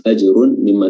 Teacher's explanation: Huruf jimnya di sini qalqalah sughra memiliki efek pantulan